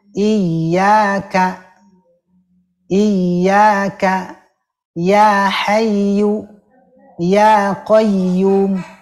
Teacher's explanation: kalau wau tasdid saja itu tidak lama ditahannya hanya ditekan dua dua harakat sekali ngayun